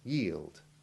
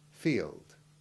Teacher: This ending is impossible to pronounce without a tiny hint of the ivy sound before the L, but keep it very tiny and avoid the common mispronunciation of letting a W sound replace the L in what should be a clean LD sound